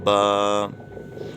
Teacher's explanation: دونوں ہونٹوں کا جو تر حصہ رہتا ہے وہ دونوں حصے آپس میں ملیں گے تو حرف پڑھا جائے گا